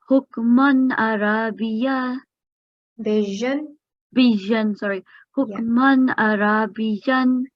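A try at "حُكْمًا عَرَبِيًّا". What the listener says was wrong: Ra is still 2 seconds. It should be 1 second. Arabijan. Arabijan. Hukman Arabijan.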